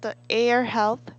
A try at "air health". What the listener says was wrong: you please say the R sound again?